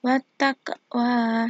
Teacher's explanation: ada fathah berdiri dan juga ada Qalqalah sugro wattaqwa di sini Q berharakat sukun dibaca mantul ringan di pertengahan kalimat